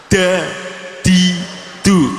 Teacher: Da, di, du, memukul gigi dan gusi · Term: dal